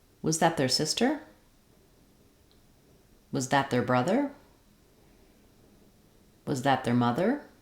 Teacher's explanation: with was that because was that is a yes no question you're going to notice a rising intonation on the stress word which will be the last word in the phrase